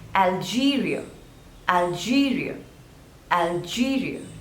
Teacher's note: There are three syllables, Algeria, and the stress is on the second syllable